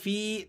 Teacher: او کظلمات فی، فا یا زیر فی، تو یہ یا مدہ ہے، آپ نے اس کو ایک الف تک کھینچ لینا ہے۔